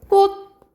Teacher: 꽃 하고 디귿으로 발음이 나거든요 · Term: 음절의 끝소리 규칙